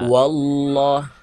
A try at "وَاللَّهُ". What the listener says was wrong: Wallah. Masih wo itu, Pak. Sebentar, masih wo. Coba gini, pertimbangannya huruf waw berharokat fathah dibaca apa? Wa kan? Nah, bahkan dibacanya wa kalau berbaris fathah. Jadi wa-nya dijelaskan, kemudian ditasydidkan huruf waw ke huruf ke lafaz Allah. Wallah, bukan wallah, tapi wallah.